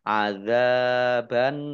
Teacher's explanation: dengan huruf terakhir yang dibaca sukun karena waqaf maka menjadi arukun dibaca panjang boleh enam boleh empat harakat